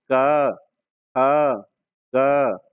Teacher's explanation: यहां कंठ से हवा निकल रही है